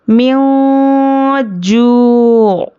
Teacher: नून की आवाज़ को नाक में छुपाकर पढ़ेंगे और इख्फ़ा की मिक़दार 1 अलिफ के बराबर है। · वाव पर जज़म और उसके पहले पेश वाव मद्दा, तो इसको 1 अलिफ के बराबर खींच कर पढ़ेंगे।